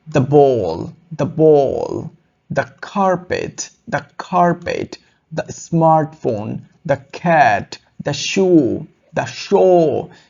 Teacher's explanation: the sounds like da before a consonant sound